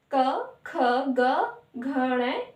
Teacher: ड़ इस यह कमर का उच्चारण स्थान कष्ट होता है मतलब इसका उच्चारण करते हैं तो हमारे कंठ का यूज होता है मतलब गले से हम बोल रहे हैं